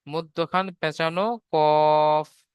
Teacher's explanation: 5 নম্বর মাখরাজ, জিভের গোড়া হতে একটু আগে বাড়িয়ে, 5 নম্বর মাখরাজ, জিভের গোড়া হতে একটু আগে বাড়িয়ে তার বরাবর উপরে তালুর সাথে লাগিয়ে উচ্চারিত হয়